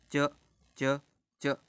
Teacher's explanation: तालु से हमारी आवाज निकलती है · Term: तालव्य